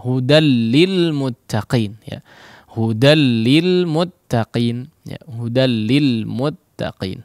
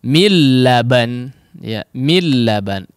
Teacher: kalau nun sukun ini bertemu dengan lam ataupun ra, ya, maka tidak dipanjangkan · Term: Idgham bi la gunnah